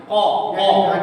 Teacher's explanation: چھوٹی زبان کے پیچھے بول رہے ہیں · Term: قاف